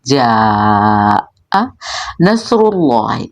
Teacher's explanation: جاء نصر اللہ، اس میں نون کے بعد صاد ہے اور صاد جو ہے اس کو موٹا اور پر پڑھیں گے، چونکہ مستعلیہ میں سے بھی ہے، صفیریہ میں سے بھی ہے، شور اور سٹی کی آواز بھی آئے گی